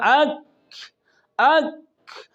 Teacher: پہلے آواز بند ہوتی ہے، بند ہونے کے بعد سانس جاری ہوتی ہے